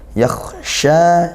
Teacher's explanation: kha sukun, dia ngalir suaranya dan juga nafasnya. Yakhsha dan tebal ya, sukunnya juga tebal.